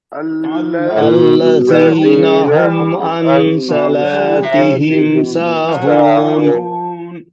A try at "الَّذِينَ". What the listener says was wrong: کوشش کیجئے الذین نہیں ہونا چاہیے, زائی کی آواز نہیں آنا چاہیے. الذين هم عن صلاتهم ساهون.